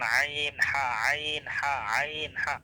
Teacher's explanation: দ্বিতীয় মাখরাজে 2টা হরফ, আর মাখরাজটা হলো হলকের মধ্যখান থেকে আইন হা